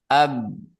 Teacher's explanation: bibir itu sedang menempel ke bibir atas, menempel ke bibir bawah, artinya makhraj huruf ba. Ab gitu ya, tanpa qalqalah tentunya.